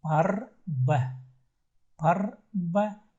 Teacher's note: Не открытое А. В русском языке открыто нормально. Но здесь нужно их немножко приглушить.